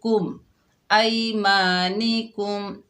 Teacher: मीम साकिन के बाद बा और मीम के अलावा जो भी हर्फ आ जाए तो मीम का इजहार होता है। यहाँ पर इजहार शफवी का कायदा होगा, मीम को जाहिर करके पढ़ेंगे